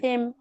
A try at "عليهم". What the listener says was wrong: இது ஹே இல்ல இது ஹே என்ற எழுத்தே இல்ல. ஆ அன்